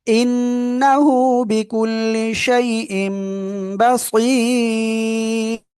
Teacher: তানবিনের পরে ইকলাবের অক্ষর বা আসছে, এজন্য মিম দ্বারা পরিবর্তন করে পড়বো।